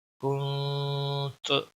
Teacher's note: इख्फा के माने होते छुपाना, यानी आवाज़ को नाक के अंदर छुपाना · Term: इख्फा हकीकी